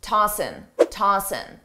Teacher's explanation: commonly a native speaker will drop the G sound on tossing, ing, and just say tossin', tossin'. I personally don't do this, but many native speakers do.